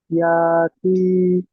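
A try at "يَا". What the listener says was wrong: ইয়া টান দিচ্ছেন কেন? ইয়া টান হবে ভাই? এটা ইজরা করেন। ইয়ার উপরে হামজা আছে নয় ভাই?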